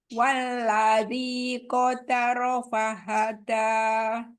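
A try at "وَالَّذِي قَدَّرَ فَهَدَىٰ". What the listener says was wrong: Ada tasydid di atas dal. Qaddara. Dal tasydid jangan seperti T sama D. Tapi D, dal, bukan ta, dal. Walladzi qadda. Langsung qadda. Qadda. Ini seperti T, D. Walladzi qaddara fahada.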